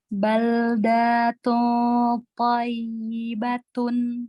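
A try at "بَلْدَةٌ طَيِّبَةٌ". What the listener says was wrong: Dalnya tidak panjang Bunda.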